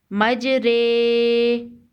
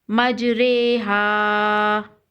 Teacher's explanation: امالہ والی رو ہے تو اسے رے کر کے ادا کریں گے